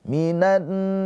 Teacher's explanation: Rnya juga dibaca dengan tarkik ya. tipis karena ron-nya berharakat kasrah.